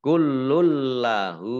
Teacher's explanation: Ini idgham bila gunnah. Idgham bila gunnah. Masuk dengan tidak mendengung.